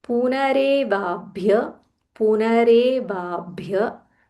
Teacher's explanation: There is a half bha, mahaprana bha.